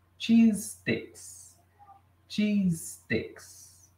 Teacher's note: o cheese termina com som de S e os sticks começa com som de S, então eles juntam aqui, ó. Faz de conta que não tem SE aqui, já vai direto pro stick aqui, ó.